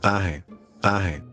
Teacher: Y también, mucho más frecuente, delante de una aspiración. Recordad que en Andalucía se puede aspirar cualquier ja, je, ji, jo, ju. Ángel se pronunciaría algo así como Aje, aje. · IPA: ['ã.he]